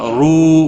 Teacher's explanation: رو واو مدہ ہے، 1 الف کے برابر کھینچ کر پڑھیں گے